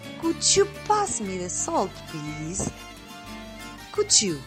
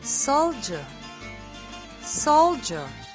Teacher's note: d is followed by the j sound turns into the affricate g sound